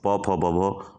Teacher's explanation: और लास्ट में है पौ फौ ब भौ, ये कहलाता है ओष्ठ। इसमें होठों को आप देखेंगे बंद होते हुए